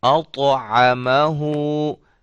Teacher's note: اب اس کو ہلانا ہے، طا ہے حروف قلقلہ میں سے ہے، اس کو ہم ہلا کے پڑھیں گے